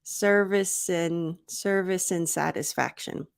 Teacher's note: I reduce the D and I make a smaller mouth sound for the A.